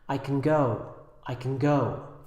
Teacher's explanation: the stress here would go on the word go there's no stress on can